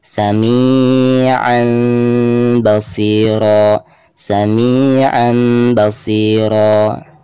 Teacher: harus menyamarkan kedua bibir ya ketika mengucapkan mim sukunnya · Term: iklab